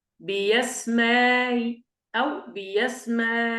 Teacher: نقرأ بإبدال الأولى ياء مفتوحة ونسهل الثانية مع الإشباع والقصر. قلنا أن التسهيل هنا المقصود به تسهيل مع الروم، فنقرأ هكذا بيسماي أو بيسماي، هكذا.